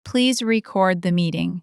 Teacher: Verb. Stress on the second syllable.